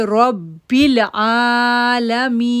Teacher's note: آئین کو 2 سیکنڈ کے لیے کھینچیں گے، را کو پورا آواز پڑھیں گے